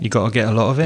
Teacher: We miss out the final T. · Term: glottal stop